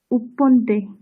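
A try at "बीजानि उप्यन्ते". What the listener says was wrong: উপ্পন্তে নয়, উপ্যন্তে। কারণ পরে প আর ইয়া দুটো মিলে প্যা, উপ্যন্তে। ঠিক আছে, যদি উচ্চারণ করতে অসুবিধা হয় উপ ইয়ান্তে দুটি একটু স্পিডে পড়ুন, দেখবেন একসঙ্গে হয়ে যাবে উপ্যন্তে।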